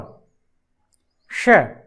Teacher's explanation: और श दांतों से उसका उच्चारण होता है